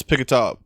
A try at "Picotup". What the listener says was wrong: You sort of said it with an ah, which doesn't exist at all. Nope, it's Picotup. It's Picotup.